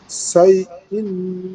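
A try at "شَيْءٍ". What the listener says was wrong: শাই, শিন হবে এটা, শাই ইন ইলমান,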